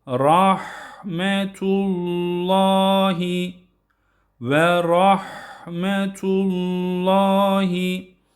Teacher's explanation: yine haya dikkat ediyoruz. Rahmetullah şeklinde değil. H olarak okumuyoruz. Kalın.